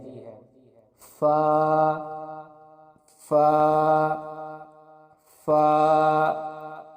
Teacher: فا کے مخرج کی ادائیگی اوپر کے دانتوں کے کنارے اور نیچے کے ہونٹ کی تری والے حصے سے ہوتی ہے